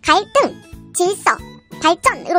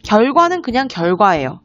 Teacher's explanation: 한자어 받침 리을 뒤에서 예사소리는 된소리가 되기도 합니다